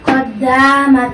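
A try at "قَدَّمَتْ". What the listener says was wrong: এর তার মধ্যে মাদ হয়ে যাচ্ছে, মাদ হবে না। কদ্দামাত কদ্দামাত কোনো মাদ হবে না।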